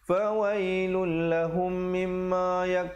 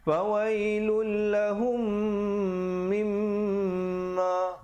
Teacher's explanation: bila mim mati bertemu mim hukumnya idgham mislan saghir dibacakan dengan kadar panjang dua harakat dan didengungkan